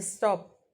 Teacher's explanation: While the T in stop is stop then there is no puff that is unaspirated.